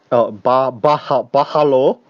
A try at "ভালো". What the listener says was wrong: But you don't say bahalo, you just pronounce the B, like you emphasize the B, like bhalo.